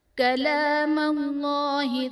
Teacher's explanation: کلام اللہ میں اسم جلالت اللہ عز و جل کے لام سے پہلے میم پر زبر ہے تو یہاں پر اسم جلالت اللہ عز و جل کے لام کو پر یعنی موٹا پڑھا جائے گا